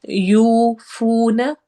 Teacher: واو مدہ دو جگہ پہ ہے، دونوں کو برابر لمبا کرتے ہوئے ہم پڑھیں گے۔ یوفون، نہ لمبا نہیں ہوگا، نہ کو فوراً ادا کرتے ساتھ ہی چھوڑ دینا ہے، یعنی نہ نہیں ہونے دینا، نہ نہ۔